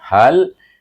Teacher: Daripada pangkal halkom terus kepada mahraj lam, bunyinya hal.